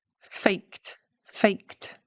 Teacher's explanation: with a T sound because the K is voiceless.